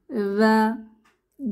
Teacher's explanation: জিহবার আগা, দাঁতের আগা, নরম আওয়াজ